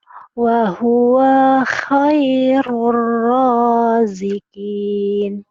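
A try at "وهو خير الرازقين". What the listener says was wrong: bahwa kenapa wanya panjang ya? Wanya panjang. Wa huwa khairur raziqin.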